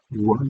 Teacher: the W is labial velar, so its place of articulation is two separate places. We have labial constriction, W, you can see that with the lips, and there's a velar.